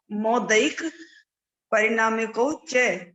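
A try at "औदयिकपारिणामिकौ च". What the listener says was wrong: परिणामिको च, जहाँ पर आकार है वहां बोलते नहीं है, जहाँ आकार नहीं है वहां आकार ले लेते हैं। परिणामिको च, पा बोलना है, परिणामिको च नहीं बोलना।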